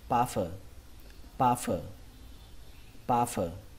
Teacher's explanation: trọng âm của từ này rơi vào âm đầu tiên, âm pa. Nó ghi là u nhưng mà cách đọc của nó là âm á, pa.